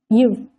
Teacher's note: இது மேல்வாய் கீழ் உதடு பொருந்துவதால் பிறக்கிறது